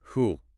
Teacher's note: The oo sound is pretty strong, so it doesn't reduce quite as dramatically as some others.